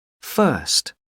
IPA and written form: fɜː(r)st (first)